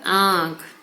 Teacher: चंद्र बिंदु वाले शब्दों का उच्चारण करते समय नाक और मुंह दोनों से हवा निकलती है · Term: अनुनासिक